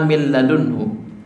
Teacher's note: Min ladunhu katanya adalah min ladunhu, tulisannya min dan ladunhu. Cara bacanya seakan-akan huruf nunnya nggak ada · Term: idgham bila ghunnah